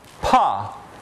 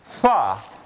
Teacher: So the difference, for instance, between this fricative fa and the stop made at the same place, pa, is only that in pa the lips come together and in fa they just get close to each other